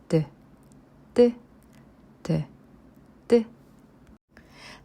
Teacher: This double 디귿 consonant is tense consonant. Thus, its sound is produced with greater tension while you pronounce 디귿.